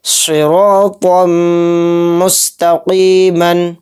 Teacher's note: را کے اوپر زبر ہے تو اس را کو بھی موٹا یعنی پر پڑھیں گے